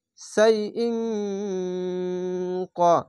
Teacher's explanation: বাংলা অনেস্কারের মতো এই ইকফা গুন্নাটি হবে ইং